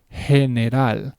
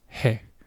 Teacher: It's almost like you're saying Jeep, like this, J. But in Spanish, it's more of an H sound. So it will be general. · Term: soft G